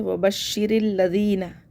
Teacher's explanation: حمزۃ الوصل گر جائے گا، را کو لام سے ملا دیں گے اور را کو باریک پڑھنا ہے، کیونکہ را کے نیچے جب زیر ہوتا ہے تو اس کو باریک پڑھتے ہیں۔